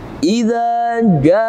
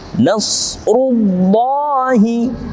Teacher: maka karena mad wajib, maka wajib dibaca panjang sepanjang 6 harokat